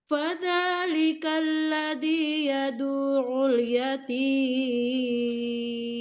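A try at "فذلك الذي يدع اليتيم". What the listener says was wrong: Ya, ain tasdidnya ditekan lagi.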